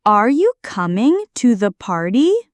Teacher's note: Yes/no questions, rising intonation. Your voice goes up at the end.